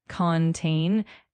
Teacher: the word contain is pronounced with the emphasis on the second syllable